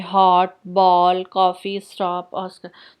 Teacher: यह ध्वनि आ तथा ओ के बीच की है। अभी आपको बोल के दिखाया था मैंने, ना आ है ना ओ है, ओ, ठीक है।